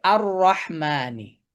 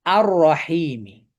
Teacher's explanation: লামটা এখানে স্কিপ হবে। স্কিপ হয়ে হামজাতুল ওয়াসলটা সরাসরি গিয়ে র কে ধরবে।